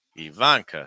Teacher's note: stress that uh second syllable